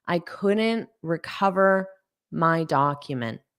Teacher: because I have a word next, I won't push out that T for couldn't. And it will probably just sound like couldn't.